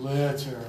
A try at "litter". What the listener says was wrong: Really good.